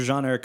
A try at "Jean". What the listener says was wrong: It's Jean, not John. It's Jean.